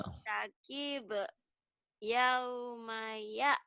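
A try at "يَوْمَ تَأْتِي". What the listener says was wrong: Titiknya di atas apa di bawah ya? Kok ya'ti, ta'ti. Fartaqib yauma ta'ti.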